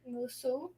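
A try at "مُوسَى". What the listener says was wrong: You ever heard Musu? Every time you hear, what do you hear? Musa, the whole time. Isa, do you ever hear Isu, Isi? With Muhammad, you can hear Muhammadun or Muhammadan, or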